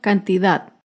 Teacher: cantidad se acentúa en la última sílaba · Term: palabra aguda